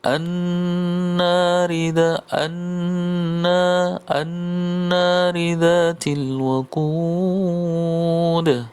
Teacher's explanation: pada kata waqud itu diakhiri dengan apa, hukumnya adalah hukum qalqalah, maka dibaca dipantulkan qalqalah · Kemudian yang terakhir ayat kelima an-nari dzatil waqud. An-nar, ada huruf nun bertasdid, maka hukumnya adalah gunnah, dibaca gunnah, ditekan, ditahan selama 2 harokat.